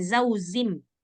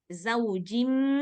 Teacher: jimnya kayak huruf qalqalah, ya kan? Nah, maka dia nggak boleh berdesis.